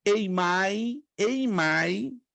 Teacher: duas sílabas no e querendo dizer que o som é fechado o som é fechado no e